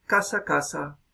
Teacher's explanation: la S que tenemos es predorso alveolar, o puede que sea también predorso dental. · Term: ceseo